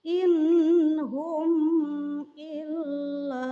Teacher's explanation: terdapat nun sukun menghadapi ha, maka nun sukun tersebut juga harus dibaca jelas karena hukum bacaannya adalah idhar.